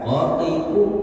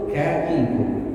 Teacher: Yang pertama huruf qaf dekat dengan tenggorokan, pangkal lidah dekat tenggorokan. Kemudian huruf kaf agak bergeser sedikit ke depan, ya, menjauh dengan tenggorokan.